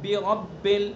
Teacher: برب کا جو زیر ہے کسرہ ہے اس کو معروف پڑھنا ہے. برب، بے رب نہیں پڑھنا، بے رب.